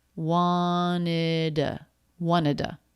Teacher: just drop the t sound altogether and just put a schwa at the end